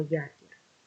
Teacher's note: перший склад я він буде відкритим і наголошеним тому що на нього падає наголос